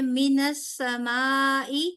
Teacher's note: یہاں پہ بڑی مد ہوئی بیکاز الف مدہ کے فوراً بعد یہاں پر حمزہ آ رہا ہے اسی کلمے میں